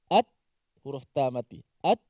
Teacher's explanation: Suara tertahan tapi nafasnya terlepas.